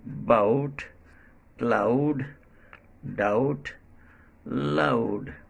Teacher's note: This vowel sound starts at a and glides to u, as in bout, cloud, doubt, loud.